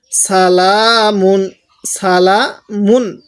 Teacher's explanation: এখানে স্পষ্ট করে গুন্নাহ করবো না